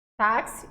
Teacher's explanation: e esse x aqui gente tem som de qu de certo então eu tenho o som de um k e de um s